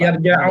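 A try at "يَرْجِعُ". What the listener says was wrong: yarji yarji'u bukan yarja'u yarji'u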